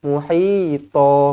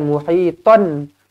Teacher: Dia mad iwad ni 2 harakat sahajalah. Dia macam mad asli juga.